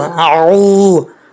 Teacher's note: عین کو کلیئر کرنا ہے، حمزہ نہیں پڑھنا